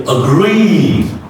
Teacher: The next is agree, okay, not agree, no, is reduced, and the long E vowel, like the she vowel is stretched, so you say agree. · the first one is reduced, the next one is stretched